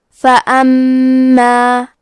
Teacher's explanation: کلمت فاما میں حرف المیم پہ تشدید ہے، لہذا 2 حرف کے برابر میم کو پڑھنا ہے کیونکہ تشدید کی اصلیت 2 حرف ہے.